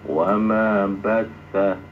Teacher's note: Jadi huruf tasdid itu harus ditekan seperti wama bassa, dan jangan ditahan